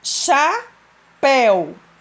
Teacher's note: Quando eu digo assim, chapéu, O pel não é mais forte? Então, pel é a sílaba tônica. E o chá é a sílaba átona.